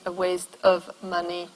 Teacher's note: Another one would be the loss of v, for instance, at the end of the preposition of